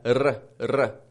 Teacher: the tip of your tongue going up and touching the ridge behind your teeth that little bump back there